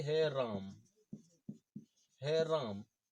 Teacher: ये आ की मात्रा है, यही 3 मात्रा का समय ले लेता है, और ये आ दीर्घ स्वर होते हुए भी यहाँ पुल्लुत स्वर बन जाता है।